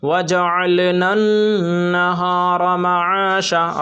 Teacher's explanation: را پور ہوگی اس لیے کہ را کے اوپر زبر ہے